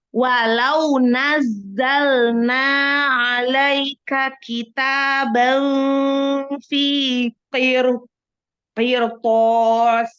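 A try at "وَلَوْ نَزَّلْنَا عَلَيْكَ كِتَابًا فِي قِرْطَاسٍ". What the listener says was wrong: Zainya nggak lulus ya sayang. Coba cuman ini aja. Nazzalna aja. Yuk. Lebih keras lagi huruf Z-nya. Nazzalna. Nazza. Bukan naz. Nazzalna. Ada z. Ada gitunya.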